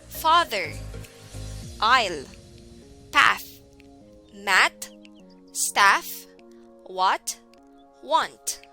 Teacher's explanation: sound a is an open back unrounded vowel as in father the tongue is really flat in the mouth the back part of tongue is pulled back in the mouth but the tip is just behind the bottom front teeth lips are in neutral position the jaw drops more than in